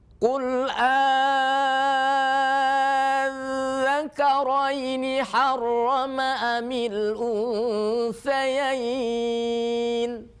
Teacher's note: kalau dal yang ada titiknya ini ketika ditasydidkan masih bersuara. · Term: sifat rukhwah